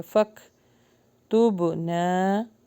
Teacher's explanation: واتبعنا الرسول فک یہاں پر جو ہے کاف کے اوپر جزم ہے تو ہلکا سا ہمز کریں گے